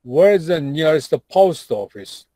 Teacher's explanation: There are many intonation, but the main one is like going down, falling.